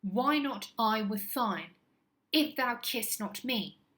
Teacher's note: Catalectic because there is a missing unstressed syllable at the end of the lines. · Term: catalectic trochaic trimeter